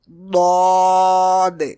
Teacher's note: So pronounce thickly from the side of the tongue like d-aad. Some people pronounce it like d-aad or d-aad, which is wrong.